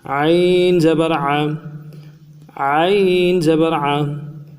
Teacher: عین کو گہرائی سے اور جماؤں کے ساتھ ادا کریں گے